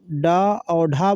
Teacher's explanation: जब हमारी जिह्वा ऊपर उठकर झटके से नीचे गिरती है उसे हम उत्क्षिप्त बोलते हैं। जैसे कि अभी जब हम डा और ढा बोलेंगे तो हमारी जुबान ऊपर उठेगी और नीचे गिर जाती है, इसलिए क्या उसको उत्क्षिप्त व्यंजन बोलते हैं।